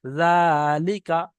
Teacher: খাড়া জবরটি হলো আলিফ মাদ্রার সমতুল্য, তাই একে এক আলিফ পরিমাণ টান দিয়ে পড়তে হবে।